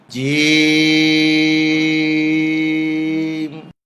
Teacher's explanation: এই হরফটি বলতে 4 আলিফ পরিমাণ লম্বা হবে, জিহ্বার মাঝখান উপরের তালুতে উঠবে, শক্ত সবল আওয়াজ হবে